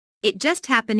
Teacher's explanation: Notice the stress on just which emphasizes that the accident happened very very recently.